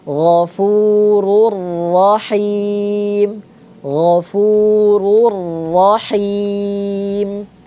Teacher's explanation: Nah, tanwinnya sudah tidak dibaca lagi. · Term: idgham bila gunnah